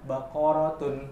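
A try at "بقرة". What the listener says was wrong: Iya, jadi jangan dipanjang-panjangkan. gitu. Atau baik itu yang di depan, di tengah maupun di belakang. Karena semuanya tandanya pendek.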